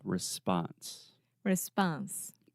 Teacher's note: in the word response in American English the second sound is the ah